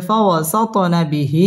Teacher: ত কলকলার হরফ ধাক্কা দিয়ে পড়তে হবে